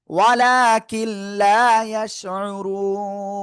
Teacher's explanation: থেমে পড়লে নুন সাকিন, তার আগে একালিফ মাদ, এজন্য 3 আলিফ টেনে পড়বো